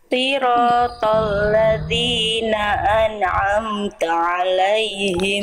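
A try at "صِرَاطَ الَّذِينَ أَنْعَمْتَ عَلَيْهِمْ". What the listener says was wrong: Stop. Lagi shotnya diperhatikan sekali lagi.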